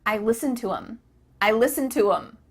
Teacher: The word them has the th cut out and instead you're saying um um I listen to them.